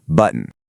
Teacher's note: You actually do this subtle little stop right in the back of your throat.